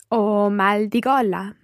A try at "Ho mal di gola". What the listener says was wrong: Molto bene.